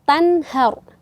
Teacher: Kemudian ro-nya dibaca juga tebal karena sebelum ro sukun berharokat fathah.